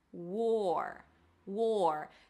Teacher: Make sure you drop the tongue after the W so it doesn't sound like were, right?